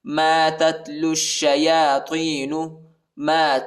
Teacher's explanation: یا کے اوپر جو ہے کڑا زبر آیا ہے، اس کو ایک الف کی مقدار تک کھینچیں گے